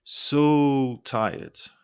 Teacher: holding so to emphasize exhaustion